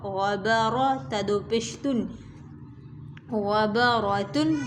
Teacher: غین کو اور را کو دونوں کو کھینچ کر موٹا کر کے پڑھیں گے